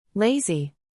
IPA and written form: ˈleɪ.zi (lazy)